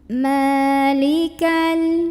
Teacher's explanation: Maka mimnya kita panjangkan 2 harokat saja. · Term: mad tabi'i